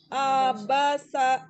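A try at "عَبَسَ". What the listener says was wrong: Kerasa nggak kalau A-nya itu beda dengan ba dengan sa-nya temponya?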